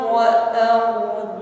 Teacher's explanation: Setelah itu getarannya ini tafkhim ya, menebal, karena sebelum ra sukun ada harokat fathah. Bergetar dan tebal, tidak hanya bergetar namun ringan.